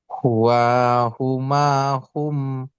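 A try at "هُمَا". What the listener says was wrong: Ma-nya panjang dikit Ustaz. Huwa, huma, hum.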